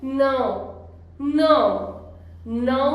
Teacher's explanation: Nasal sound है और बहुत गहरी आवाज है, ये बिल्कुल अंदर से आवाज आती है।